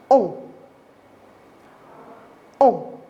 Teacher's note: cette voyelle, c'est une voyelle nasale. Ça veut dire qu'il y a un petit air qui sort par le nez et par la bouche. Ça va donner le son ON.